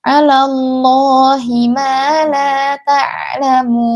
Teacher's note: alallah ini tebal karena huruf sebelum lafzul jalalah adalah huruf yang berharakat fathah. Dia otomatis dibaca tebal.